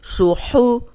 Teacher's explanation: صاد موٹا ہے، سیٹی والا بھی ہے، ہا حروف ہلکی ہے